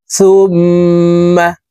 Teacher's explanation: করে ফেলবো হরকতের বামে মিমের উপরে তাসদি আছে তো এই সাশদ মিমের সাথে তিন সেকেন্ড পরিমাণ নাকের বাঁশি থেকে গুন্না করে ধরে রাখবো সা মিম পেশ সুম্ম মিম জবর মা সুম্মা কাফ লাম জবর